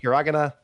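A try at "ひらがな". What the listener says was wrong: Your pronunciation of that was terrible, but I'll give it to you. It's hiragana. You emphasized the wrong syllable. You said hiragana. Hiragana. That's how you said it. You sounded like it sounded like Stroganoff when you said it. Hiragana.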